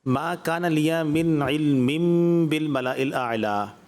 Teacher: پہلی جگہ پر اظہار ہو رہا ہے، دوسری جگہ پر اقلاب کا قاعدہ ہوگا، یہاں پر غنہ کیا جائے گا